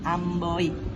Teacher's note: Amboy menggunakan diftong oi. Bunyi berpindah dari O ke I.